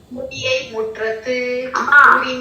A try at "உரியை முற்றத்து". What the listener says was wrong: மூ அல்லமா உரி. அந்த உரியை முற்றத்து